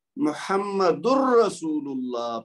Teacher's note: دال کی جو تنوین ہے نا اس کی آواز نہیں آئے گی، وہ دال کی آواز را کی آواز کے اندر مکس ہو جائے گی، یعنی بغیر غنہ کے